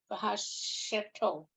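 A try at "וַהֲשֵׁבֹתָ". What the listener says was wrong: Now there's a dot over the vet. Vahashevota.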